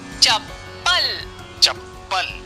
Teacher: चप्पल शब्द में भी प का उच्चारण 2 बार हो रहा है और पहले प की आवाज कम और दूसरे प की आवाज ज्यादा है। इस कारण चप्पल शब्द में पहले आधा प फिर पूरे प का प्रयोग किया जाएगा।